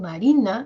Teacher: en Marina que es el sujeto miren Marina el tono sube es decir no los puntitos van a ir subiendo Marina Generalmente